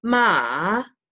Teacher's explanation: The third one is a dip, so it's like a V, a dip, and you kind of do that in like ma, and you can hear that dip.